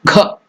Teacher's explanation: So that Gha is Mahaprana, not Ga.